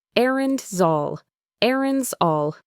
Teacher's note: the S at the end of errands can link to the next word, all. It creates a Z sound in between.